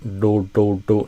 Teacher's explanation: If you move it too far back, do, do, do, you start getting kind of an Indian accent sound, a retroflex D. But yeah, experiment with where you put the tip of your tongue for that, where you put that pressure.